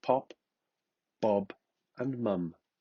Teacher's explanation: Formed with the two lips together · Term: Bilabial